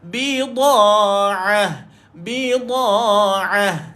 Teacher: Ain kita tolakkan Ain tu tengah-tengah kerongkong